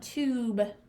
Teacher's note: it's making the oo sound like tune so this has the oo sound it doesn't say you